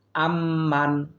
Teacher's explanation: আম হরকতের বামে মিমে তাসদিদ এসেছে, সুতরাং এটা আমরা ওয়াজিব গুণনা করার চেষ্টা করব। আম্মান, এই মানে আমরা কোনো গুণনা করব না, যেহেতু ইজহার নুন সাকিনের বামে হা এসেছে, সুতরাং আম্মান, আম গুণনা করব, মান গুণনা করব না।